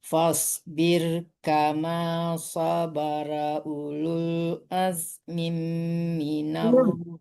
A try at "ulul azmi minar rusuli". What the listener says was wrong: Bukan azmim ya, mimnya tidak tanwin ya, minal. Jangan mim juga ya, tapi mi aja. Kalau mim itu dua, kasrohnya satu ya. Azmi minal. Azmi minal.